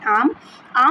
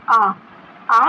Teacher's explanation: जैसे कि हम जो बड़ा आ है जैसे आम बड़ा आ से आम वाला जो आ है उस वो जब हम बोलते हैं तो हमारा जो मुंह है वो पूरी तरीके से खुल जाता है। आ जब हम बोलते हैं तो मुंह पूरी तरीके से खुल जाता है। मुख जब पूरी तरीके से ओपन हो जाता है। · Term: विवृत